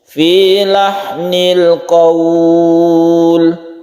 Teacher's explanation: qaul, jangan sampai condong ke o tapi ke u